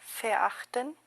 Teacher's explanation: Porque hemos visto que la V al principio en una palabra en alemán se convierte en F. Ahora, noten cómo aquí la ER se convierte en una A media, y luego se escucha un ese como cuando alguien se está quejando, ¿vea?